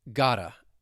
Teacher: when the T comes between 2 vowel sounds with the American accent, you're going to hear me pronounce it as a flap T.